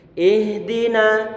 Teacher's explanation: Ha dia makhrojnya ataupun tempatnya adalah di tenggorokan bagian pertengahan